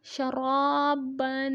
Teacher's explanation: را پہ زبر ہے تو را کو موٹا کریں گے اور با پہ غنہ کریں گے، شرابن. سوا زبر سوا واو زبر الف وا صوا.